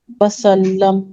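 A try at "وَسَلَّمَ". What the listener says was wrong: वसल्लम पे हमेशा वसल्लमा मीम पर फतहा आता, हमेशा ध्यान दीजिए। हाँ, ये फेल माजी है, माजी है ये, फेल है ये। वसल्लमा सल्लमा है ये। फेल माजी नहीं है, दूसरा फेल है।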